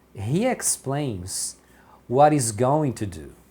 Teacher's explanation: Então aqui ele emenda o what e o his. Então aqui ele fala what is what is porque o he ele tira o h aqui fica só um is e o t emenda.